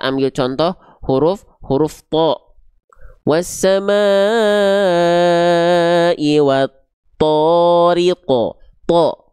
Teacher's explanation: Dibacanya tariqo, bukan ta, tapi terdengar seperti vokal O ketika berharokat baris atas. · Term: huruf tebal